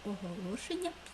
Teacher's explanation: М'який приголосний подовжений звук